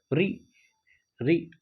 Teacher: आपकी जीभ का अगला हिस्सा मूर्धा से टकरा रहा है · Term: मूर्धन्य